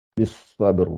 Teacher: puisque le sad, elle est gonflée. Le ba, elle est qalqala. Bisab, ab, il faut que je fasse la ab, et je dois faire un ra qui est gonflé aussi.